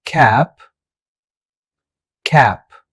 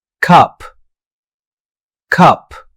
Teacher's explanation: Cap has the a sound which is wide and open, but cup has the a sound which is more central and relaxed.